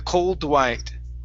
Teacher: give me a D right before the word white